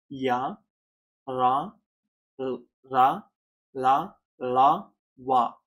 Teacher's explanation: ఇవి అంతస్థాలు ఇవి అంగిలి సాయంతో పలుకుతాం